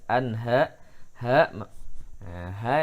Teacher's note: nun mati bertemu dengan hak maka tidak boleh dengungkan tidak boleh ditahan langsung jelas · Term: izhar halqi